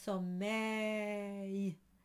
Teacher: it's an A sound with a little Y at the end, but it's treated as a consonant. It's only at the very, very end.